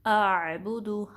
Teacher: हमज़ा जो है गहरे हिस्से से निकलता है हलक के, और जो आइन है वो दरमियाने हल्क के हिस्से से निकलता है।